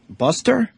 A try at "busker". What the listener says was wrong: Busker with a K.